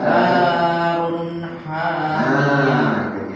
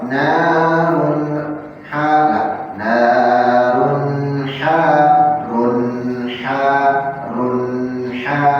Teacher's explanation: Jadi tersambung, jangan ada jeda. Kalau ada jeda pasti ada qalqalah.